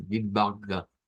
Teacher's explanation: Es de estas palabras en donde cambiamos el sonido de una W por una V, tenemos esa O corta, es al CH que hemos dicho que no suena para nada a una CH, sino que suena más bien como una especie de G. Es un sonido uvular, y que eso no es una X tampoco como la nuestra.